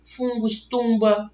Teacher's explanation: você tem o N nasalizando a vogal anterior